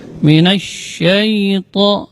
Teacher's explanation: huruf sya keluarnya dari tengah-tengah lidah. Ini termasuk huruf tafasyi. Makna tafasyi intisyarul hawa fil fam, menyebarnya udara di mulut.